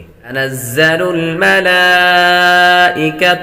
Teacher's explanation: ملائکۃ، لام پر کھڑی حرکات ہے، کھڑی حرکات حروف مدہ کے قائم مقام ہے، حروف مدہ کے بعد حمزہ اسی کلمے آ رہا ہے تو مد متصل ہوگی